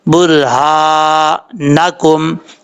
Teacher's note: را ساکن سے پہلے پیش ہو تو را پر پڑھا جاتا ہے یعنی موٹا پڑھا جاتا ہے